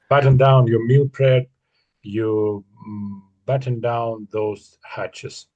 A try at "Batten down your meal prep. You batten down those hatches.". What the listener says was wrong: Yeah. Yeah, I think you had it.